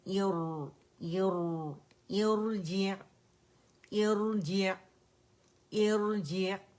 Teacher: را سکون سے پہلے عارضی کسرہ ہے، تو اس وجہ سے ہم نے کیا کرنا ہے کہ را موٹی پڑی جائے گی